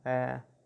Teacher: Tenemos la A, posteriormente la A con dírisis, tiene un sonido como si fuera entre la A y entre la E